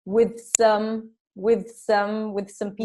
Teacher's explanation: transition when we have voiceless th and s